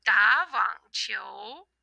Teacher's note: because we have two third tones together when we say this, the first one becomes rising tone, tone sandy rule.